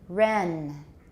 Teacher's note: different sounds wrong run okay don't make the end too long the vowel even though it's short it's still relatively long compared to the length of the N